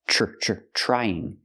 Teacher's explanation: pronounced with a CH sound like chicken plus the r